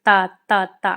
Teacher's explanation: ता ता ता आप बोलिए, तो देखिए ये आपके दांतों को टच करेगा।